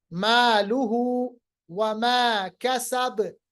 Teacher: बा पे कलकला, नॉर्मल कलकला, बा साकिन बनेगा